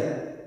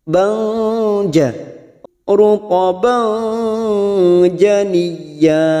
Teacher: Karena di sini sekarang kita wasol atau terus, maka alaiki ruqaban ruqaban. Fathah tanwin pada huruf ba kita samarkan 3 harokat, siap masuk ke huruf jim, huruf ja. Banja, ruqaban janiyya.